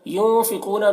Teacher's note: ينفقون، نون میں اخفا ہوگا کیونکہ نون ساکن کے بعد حروف اخفا میں سے فا ہے تو نون میں اخفا کریں گے، اور قاف کو پر پڑھیں گے، قاف حروف مستعلیہ میں سے ہے